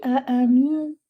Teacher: Don't touch the makhraj of noon. Do not even touch the makhraj of ta, but go close to the makhraj of ta. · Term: ikhfa